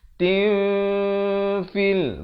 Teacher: Asalnya ta tanwin di bawah bunyi tin. Tapi bila datang fa disamarkan kadar 2 harakat. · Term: ikhfa hakiki